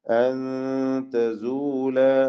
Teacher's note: സാക്കിന നൂനിനെ ഇഖ്ഫ ഹഖീഖി നൽകി മറച്ചു മണിച്ച് അവ്യക്തമാക്കി മണിച്ചുകൊണ്ട് ഓതണം